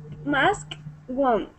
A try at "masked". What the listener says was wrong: Okay, you know how to say mask, and then the ED is the T sound, so it's masked.